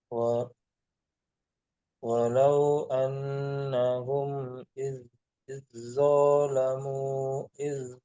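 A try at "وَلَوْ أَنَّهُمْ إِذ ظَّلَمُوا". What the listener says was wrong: Bawanya pendek Pak, maaf.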